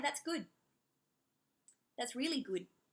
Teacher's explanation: So I'm not pronouncing the D, I'm just placing my tongue right there